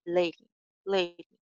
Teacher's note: ड साउंड जो है इट्स फ्लैप डी यानी उर्दू में जो रे की आवाज होती है उसके साथ इसको थोड़ा सा मिला देंगे